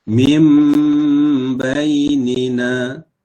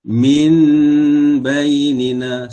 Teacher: Huruf nun ini kita tukarkan dengan huruf mim. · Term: iqlab